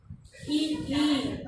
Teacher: जीभ जो है वो हल्की सी ऊपर उठ रही है, किस तरफ? तालु की तरफ, तो ये हो जाएंगे तालव्य।